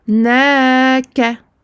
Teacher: Donc ici, on prolonge le na et pas le ka. Donc le na 2 temps.